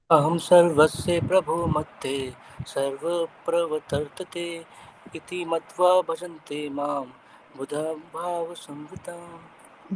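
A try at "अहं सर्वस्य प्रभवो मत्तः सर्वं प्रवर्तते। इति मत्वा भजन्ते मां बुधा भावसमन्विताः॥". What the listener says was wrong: जी आपने बोला बराबर, लेकिन वो जो ब्रेक लेना है ना वो गलत जगह पर लिया। तो देखिए, अहम सर्वस्य प्रभवो मत्तः सर्वम प्रवर्तते, यानी क्या हो जाता है, दोनों जो उसका मीटर, बेसिकली मीटर बराबर आ जाता है।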